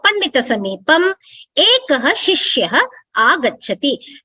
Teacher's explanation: Please note that the Anuswara has changed to the Makara.